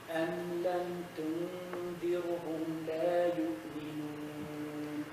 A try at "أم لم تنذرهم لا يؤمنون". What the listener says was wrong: Why you say tunzirhum? Tunzir. Remember the ra is light because there is a kasra before it.